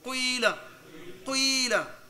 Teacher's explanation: You smell it, you put a smell of waw there inside. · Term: ishmam